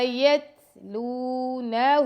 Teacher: لام کے ساتھ واو مدہ تو لام کو 2 سیکنڈ کا ٹائم دیں گے. یتلونہ، یت، یہاں پہ ہمس ہو رہا ہے تا پہ.